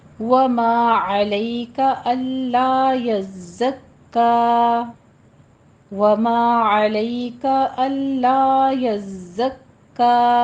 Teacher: ज़ाय के ऊपर काफ के ऊपर तशदीद है, सख्ती से थोड़ा रुक कर फिर चलेंगे आगे